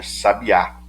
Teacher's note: Sábia termina em ditongo. Sábia. O I e o A não se separam. Tem que ser o A sozinho.